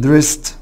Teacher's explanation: dressed هتقول لي بعد السا ساوند الاي دي بتنطق ته تبقى dressed.